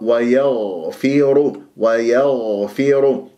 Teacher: رخاء والغين مع تفخيمها مرتبة رابعة لأنها ساكنة من حروف الاستعلاء